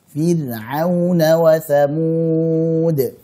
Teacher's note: Ra sukun sebelumnya kasrah dibaca tipis